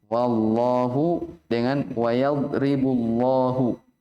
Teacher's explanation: Di atas dikatakan bitaghlil lamil jalalati maka qablaha fathah au dhammah. Dengan menebalkan ya. Lafzul jalalah Allah kalau sebelumnya fathah atau dhammah. Contohnya wallahu dengan wayadribu.